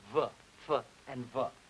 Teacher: Labiodental, lower lip and teeth